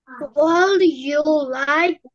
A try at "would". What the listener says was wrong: না would, এটাকে এল উচ্চারণ করা যাবে না। would you like,